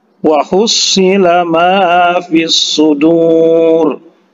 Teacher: Wa hussila ditekan, ya, huruf shadnya ditekan karena bertasydid, ya.